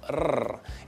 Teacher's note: Technically called an alveolar trill.